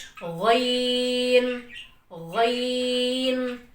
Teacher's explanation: تو ادنا حلق سے غین ادا ہوتا ہے، حلق کا شروع والا حصہ۔